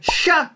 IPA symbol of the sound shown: ʃ